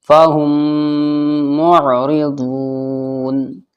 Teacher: میم ساکن کے بعد دیکھیے دوسرا میم آ رہا ہے تو ادغام شفوی ہوگا غنے کے ساتھ